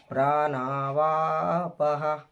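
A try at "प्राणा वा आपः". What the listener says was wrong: ఈ మూడు అక్షరాలకు మూడింటికి దీర్ఘాలు ఉన్నాయి. అందువల్ల మూడింటిని మనం దీర్ఘం తీయాలి. ప్రాణావా ఆపః. ప్రాణావా ఆపః.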